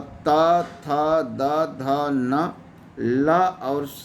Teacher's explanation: दंत वर्ण को परिभाषित किया गया कि जिन वर्णों के उच्चारण में जीभ का अगला हिस्सा दांत को स्पर्श करता है, उन्हीं को दंत वर्ण कहते हैं। त वर्ग अर्थात त, थ, द, ध, न, ल और स को जो है दंत वर्ण कहा गया है।